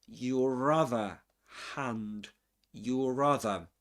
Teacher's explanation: So what we get there is a linking ra sound.